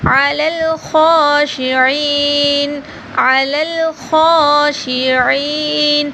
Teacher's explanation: خا اور عین کو بھی تھوڑا سا لمبا کیا جائے گا